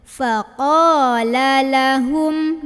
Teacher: ini fa keluar angin, ini qa pangkal lidah naik